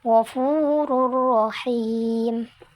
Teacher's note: ada lam dan ro maka dibacanya tanpa dengung